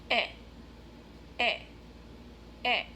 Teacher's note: My lips are short, not super tight, not round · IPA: /e/